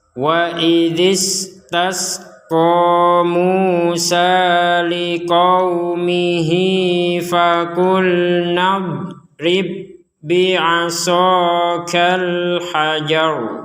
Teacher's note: Tidak ada pantulan sama sekali untuk huruf dot. Karena huruf dot tidak termasuk huruf-huruf yang dipantulkan.